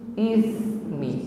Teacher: Ya, sifatnya hamas, mengalir nafas, bukan mengalir bunyi desis